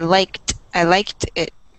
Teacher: This word in the past with like, it's pronounced almost with a T sound.